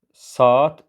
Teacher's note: E artırılmır tam tərsinə A-nın biri düşür · Burada qoşa saitli sözüm saat sözdür və onun tələffüzü olacaq saat formasında. Yəni, Y artırılmır, tam tərsinə A-nın biri düşür.